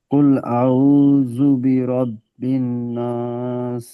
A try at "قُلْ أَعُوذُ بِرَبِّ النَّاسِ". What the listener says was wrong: গুন্না ছেড়ে যাচ্ছে।